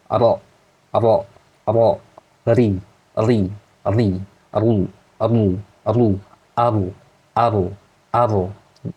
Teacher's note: At-takrir, ujung lidah bergetar itu hanya huruf ro.